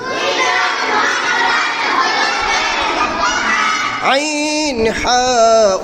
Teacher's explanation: 2 নং মাখরাজ হলকের মধ্যখান। আইন হা উচ্চারিত হয়।